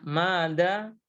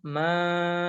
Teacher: Jadi yang pertama mada. Ma-nya dibaca panjang 2 harokat. Sedangkan sebelah kirinya madda. Ma-nya dibaca panjang 6 harokat. Kenapa? Karena dia bertemu dengan huruf bertasydid.